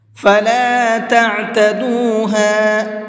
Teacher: عین کو حلق سے نکال کر کے پڑھیں گے، اور اگر ہم حلق سے نہیں نکالیں گے تو پھر یہ حمزہ بن جائے گا، تعتدوها ہو جائے گا، تو تعتدوها غلط ہے، تعتدوها۔